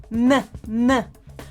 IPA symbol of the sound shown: n